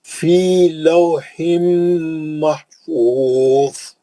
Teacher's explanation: زوئے موٹا پڑھ کے سیز کر دینا بس